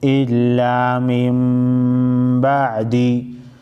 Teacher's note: با دال زیر دی الا من بعدی دلته اقلاب ویل کېږي نون ساکن نرسته چې کله با راشي نون ساکن به په میم کې بدل شي او غنه به پکې کېږي